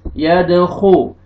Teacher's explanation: खा को आपने मोटा करके पढ़ना है